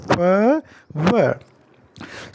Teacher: ये लेबियोडेंटल साउंड है, नीचे का ओंठ ऊपर के दांत को टच कर रहा है